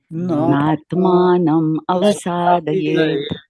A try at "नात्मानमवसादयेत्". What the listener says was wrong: हाँ, तोड़ के नहीं बोलिए। नात्मानमवसादयेत्।